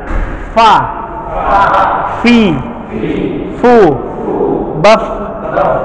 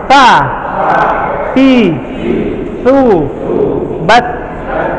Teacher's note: Kaidah intinya, huruf-huruf yang ini, yang dia sifatnya al-hams, kalau secara bahasa artinya samar, kalau secara istilah dia pengucapannya diiringi dengan keluarnya nafas. Maka mengucapkan huruf-huruf ini harus dengan nafas yang kebuang.